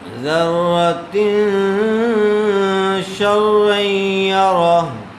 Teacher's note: ذرۃ شرا یرا یہاں پر غنّے کے ساتھ اخفاء ہوگا چونکہ تنوین کے بعد شین آیا ہوا ہے۔ ذرۃ شرا یرا۔